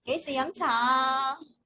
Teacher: So it kind of goes gay si yum cha, and you kind of go up a little bit.